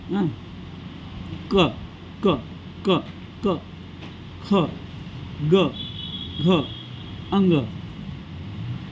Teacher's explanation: जिभेच्या मागील भागांच्या कंठाला स्पर्श केल्यानंतर ज्या वर्णांचा उच्चार होतो त्यांना कंठवर्ण म्हणतात.